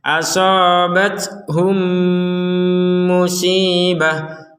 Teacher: Hum dengung langsung langsung kepada mim yang kedua. Jangan dipisah.